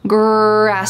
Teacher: in American English, we often call this the colored R because it's very strong